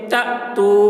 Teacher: یہاں پر واو ساکن ہے، واو ساکن سے پہلے پیش ہے، واو مدہ ہوا، اس لیے واو مدہ کو ایک الف کے برابر کھینچ کر پڑھیں گے